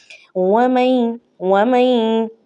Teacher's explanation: ادغام بھی کرنا ہے اور ہم نے گنہ بھی کرنا ہے، اور یہ جو تشدید ہے یہ عارضی تشدید کہلائے گی، کیونکہ یہ نون ساکنہ کی وجہ سے آئی ہے۔ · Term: ادغام مع گنہ